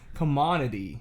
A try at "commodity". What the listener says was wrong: You're close. That one was very close. Commodity. There's a D in there. You say commodity. Is what you said. You're saying like commodity. No, it's commodity.